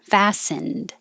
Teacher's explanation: i'm not going to release the d